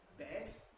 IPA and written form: bet (bed)